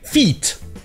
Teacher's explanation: feet avec deux E a le son I, un peu comme le I en français